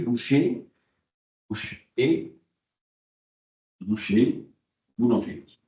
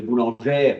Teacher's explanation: le E fermé devient E ouvert